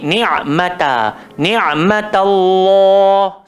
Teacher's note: Yang tebal cuma nama Allah. Ta tu jangan ikut tebal. Jangan jadi ni'matullah.